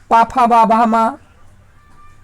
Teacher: प, फ, ब, भ, म इन सभी का उच्चारण स्थान ओष्ट है। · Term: ओष्ठ